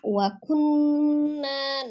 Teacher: wajib gunnah ditahan 2 sampai 3 harokat, di gunnahkan, dengungkan ya, suaranya masuk ke rongga hidung atau al-khaisum